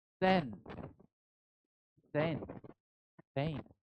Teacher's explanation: T is uttered clearly, and when it appears at the beginning of the word, clear, it is aspirated T.